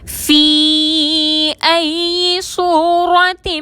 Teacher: فی میں یا مدہ ہے اور اس کے بعد حمزہ آ رہا ہے، مد ہوگی، 4 حرکت کے برابر کھینچ کر پڑھیں گے